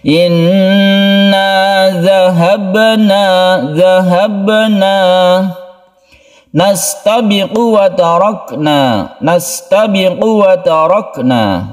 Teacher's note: Jadi qafnya ini pendek, langsungkan ke wawu. Kemudian wa tarakna, jangan lupa kaf ini mempunyai sifat hamas yang dia itu ketika kita sukun itu ada hembusan nafas sedikit.